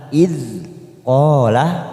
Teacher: huruf dal sukun bukan qalqalah maka kita tahan. Idh qala, qa fathah diikuti alif 2 harokat.